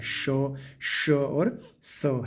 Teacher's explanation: संघर्षी क्योंकि उनको उच्चारण करने में संघर्ष करना पड़ता है या फिर हवा घसीट के बाहर निकलती है।